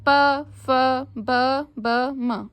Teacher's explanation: फिर प वर्ग, प, फ, ब, म, ओष्ठ। हमारे जो ओठ हैं वो आपस में टच हो रहे हैं ना